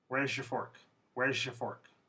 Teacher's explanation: This Z and Y, they mix to become a J sound. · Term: palatalization